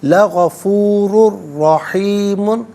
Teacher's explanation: غفور میں را پر دو پیش کی تنوین ہے، اسے رحیم کی را کے ساتھ ملائیں گے اور را کی آواز کو ہی ادا کیا جائے گا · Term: یرملون کا جو قاعدہ